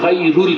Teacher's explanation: ابھی ہم نے پڑھا خیر, تو ہم لوگ تو را کو پر پڑھیں گے, لیکن وہ کہتے ہیں ورش کی را متحرک سے پہلے اگر کسرہ یا ساکنہ ہو تو اس را کو بھی باریک پڑھنا ہے